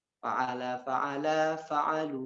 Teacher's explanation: wawu jam'ah itu adalah wawu yang memang wawu sukun, dan ketika ada wawu itu harus dipanjangkan